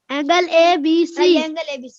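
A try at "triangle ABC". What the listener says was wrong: कोई एंगल नहीं, ट्राई एंगल। बोलो ट्रायंगल ABC।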